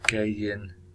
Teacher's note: adding a Y at the start of in, or dropping the T, get into